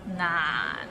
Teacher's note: we start with n and ends with another n and it's in a low tone